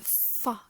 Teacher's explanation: you are using both your lips and teeth right in order to pass the air through this narrow space right we can try it out we also have here the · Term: lebu Dental